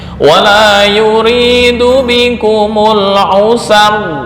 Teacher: Nakol memindah harokat ke sebelumnya.